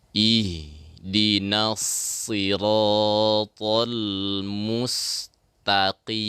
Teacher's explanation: huruf so ini adalah huruf lisan ya, bukan huruf syafatain